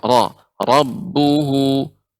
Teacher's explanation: Setiap roh yang berharokat fathah, setiap roh yang berharokat dhammah, ya, maka ini dibaca dengan tebal. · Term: roh yang tebal